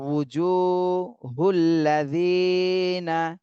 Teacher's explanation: জিতে এক আলিফ টান দিতে হবে, জেরের বামে জজমালা ইয়া মদের হরফ। উজু, এখানে যদি উ বলেন, উ হামজা বললে কিন্তু এটা ভুল হয়ে যাবে, হামজা বলা যাবে না, উ, উ, ওয়াও, ওয়াও পেশ উ, উজুহুল্লাযীনা।